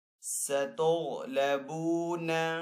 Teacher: غین حروف مستعلی میں سے تو غین کو یہاں پہ پر پڑھیں گے